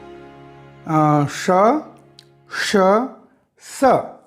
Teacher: इन व्यंजनों का उच्चारण एक प्रकार की गड़गड़ाहट या घर्षण से उत्पन्न होने वाली ऊष्म वायु से होता है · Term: ऊष्म व्यंजन